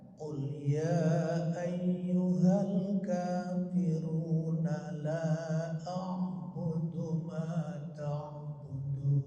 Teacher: enggak boleh panjang-panjang 6 harkat Kenapa karena nunnya hidup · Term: Mad thabii'i